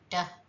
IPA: d